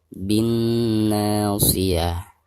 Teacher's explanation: Alif lam tidak dibaca karena dihukumnya alif lam syamsiyah. Jadi dari bacaan bi langsung ditasydidkan ke huruf na ya, sekaligus digunakan karena nun yang bertasid adalah huruf gunnah ya.